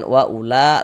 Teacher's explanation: dibaca panjang ini namanya adalah mad wajib muttasil